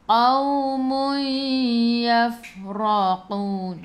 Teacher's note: Masuk ke dalam fa, fa ada sukun. Ingat huruf fa sifat hurufnya hamas. Okey, hamas jadi kena bunyikan, kena keluar angin.